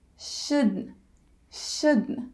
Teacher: instead of not just make the n Sound